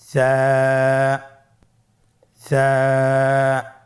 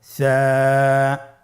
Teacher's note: জিহ্বার আগা সামনের উপরের দুই দাঁতের আগার সঙ্গে লাগিয়ে উচ্চারিত হয়